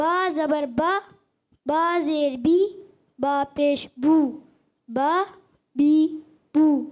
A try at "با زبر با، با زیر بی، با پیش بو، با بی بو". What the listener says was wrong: زبردست. تھوڑا اور ٹھہر کے. شاباش.